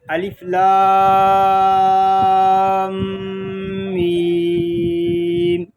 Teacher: الف لام میم، ان میں دیکھیں مدات کی مقدار بھی ہم نے پوری رکھنی ہے اور آگے میم ساکن میں دوسرا میم آ گیا ہے، اس لیے یہاں پر ادغام شفوی بھی ہوگا، یعنی اس میں غنہ بھی کریں گے